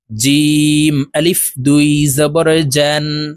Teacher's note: জিম হরফ জিহ্বার মধ্যখান থেকে উচ্চারণ করব কারণ জিমের মাখরাজ জিহ্বার মধ্যখান থেকে হবে জিম আলিফ দুই জবরের